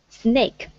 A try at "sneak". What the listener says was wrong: Sneak. So we have, this is snake. This is sneak. Sneak. E-E. So it's an E-E. Sneak. Sneak. Like in the word sneeze. It's the same sound.